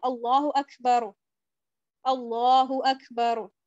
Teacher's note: تو آپ کو کاف تھوڑا سا فیل ہوتا ہے، کاف میں تھوڑا سا کھ فیل ہوتا ہے، لیکن وہ کھ نہیں ہے